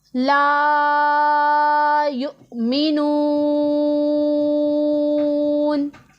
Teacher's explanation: الف مدہ ہے، اسے ہم نے ایک الف کے جتنا لمبا کریں گے۔ آگے حمزہ ساکن ہے، اسے جھٹکے کی آواز کے ساتھ پڑھیں گے